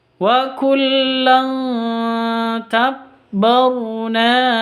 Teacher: tanwin bertemu dengan ta samar disertai dengung samar disertai dengung siapsiap ke huruf tnya karena ini sama-sama sama